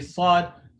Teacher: you can kind of hear a slight whistle sound a very very slight one so that sound is called sofia that's happening because this area · that air is creating the whistle sound for the letter sod when pronouncing the sod the back of the tongue gets raised to create that heaviness